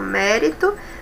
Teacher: a de trás para frente é a terceira, ou seja, a antepenúltima é a mais forte. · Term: proparoxítonas